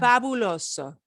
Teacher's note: this won't be a really strong b because it's between the ah and the uh